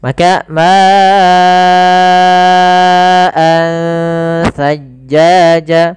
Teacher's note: ma-nya kita panjangkan sepanjang 4 harakat atau 5 harakat. Karena di sini kita namakan dengan mad wajib muttasil.